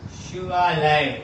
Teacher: शिवालय को जब आप उच्चरित कर रहे तो बड़े आ पे बलाघात हो रहा है, शिवा बड़ा आ।